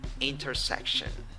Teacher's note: in the fourth syllable, you have I and O when you write it, but in the pronunciation, you have schwa. So intersection.